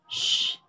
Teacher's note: voiceless palato alveolar fricative sound sh